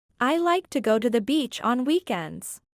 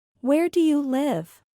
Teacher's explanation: la entonación descendente, que es cuando el tono de voz se reduce al final de una palabra o frase